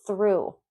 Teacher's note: if you're not pronouncing that TH, like the Z in Spanish, with your tongue between your two front teeth, then you're saying a different word or you're pronouncing it as a T.